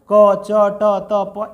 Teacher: क में कम वायु तो अल्प प्राण